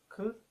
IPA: kʷ